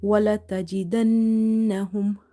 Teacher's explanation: واو فتح وا، لام فتح لا، ولا تا فتح تا، ولا تا جيم كسرة جي، ولا تجي دال نون فتح دن، نون فتح نا، دن. So you have to hold the noon sound here in order to do nasalization. وَلَتَجِدَنَّهُمْ ha mim dama hum.